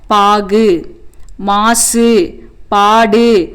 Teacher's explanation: இந்த ஆறு வல்லின உகரங்களும் இறுதியில் வரும்போது தனக்குரிய ஒரு மாத்திரை அளவிலிருந்து குறைந்து அரை மாத்திரை அளவாக ஒளிக்கும். இவ்வாறு தனக்குரிய ஓசையிலிருந்து குறைந்து ஒளிக்கும் உகரம் குற்றியல் உகரம் எனப்படும்.